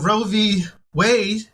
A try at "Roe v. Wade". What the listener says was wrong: Not Road v. Wade. You said road. Robe your way. Robe your way. Roe v. Wade.